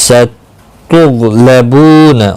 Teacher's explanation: ستغلبون، غین مستعلیہ ہے، پر پڑھا جائے گا، بو واو مدہ ہے، ایک الف کی مقدار کے برابر کھینچ کر پڑھیں گے